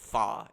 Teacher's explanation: he sings the word far there's no R sound it's just like fa it's almost like a voice crack this